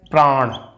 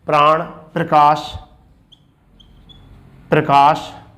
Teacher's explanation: ये कौन सी होती है संयुक्त ध्वनि, जब दोनों ध्वनि एक साथ उच्चारित हों, जैसे प्राण, तो प्राण में प्र और रै दोनों उच्चारित हो रहे हैं